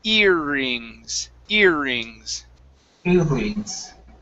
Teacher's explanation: even though there's a double R, we don't roll it.